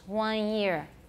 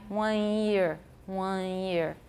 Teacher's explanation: Nasalized vowel with no alveolar contact with the tongue tip for the N. There's no N there at all. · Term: Taiwan English